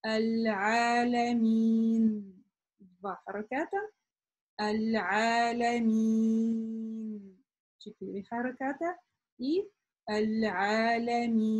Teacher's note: Здесь, конечно, как мы помним, у нас есть мад, который при остановке изменяется или может изменяться, и у нас могут появляться варианты прочтения. То есть мы можем вот это «я» долго прочитать при остановке только в 2, 4 или 6. При продолжении у нас только один вариант — это 2 харакята.